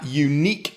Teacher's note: And that's because this time it starts with the y sound, which is a consonant. There is friction in the vocal tract to create the y sound.